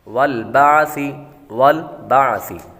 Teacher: والبعث، والبعث، با کے بعد عین کی آواز نکالیں گے اور سا کی آواز نکالیں گے، سا کو ہمیشہ نرمی کے ساتھ پڑھتے ہیں۔ والبعث، سی نہیں، سیٹی کی آواز نہیں بلکہ نرمی کے ساتھ پڑھیں گے